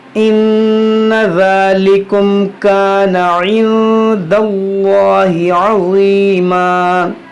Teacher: دیکھیں یہاں پر نون ساکن کے بعد دال ہے، یہاں پر اخفا بھی ہوگا اور اس میں جلالت سے پہلے زبر ہے تو اس کو موٹا بھی پڑھیں گے، یہاں پر ظا ہے عین بھی ہے، دونوں کو صحیح سے ادا کریں گے.